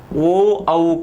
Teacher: कंठोष्ठ से उच्चारित वर्ण, तो कंठोष्ठ से उच्चारित वर्णों के लिए सूत्र है ओदोइतो कंठोष्ठम। अर्थात ओ औ का उच्चारण स्थान कंठोष्ठ होता है। क्योंकि ये दो स्थानों से उच्चारित होते हैं, कंठ और ओष्ठ से।